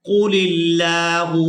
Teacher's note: लफ्ज़ अल्लाह के लाम को बारीक अदा करेंगे, क्योंकि लफ्ज़ अल्लाह के लाम से पहले वाले हरफ के नीचे ज़ेर है।